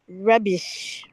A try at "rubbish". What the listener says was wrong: Nope, rubbish. I need the trilled R. Not so hard. Just one. Brr. Rubbish.